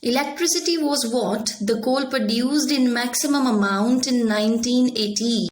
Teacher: the sentence stress would be on the amount of electricity as the maximum figure among all the given products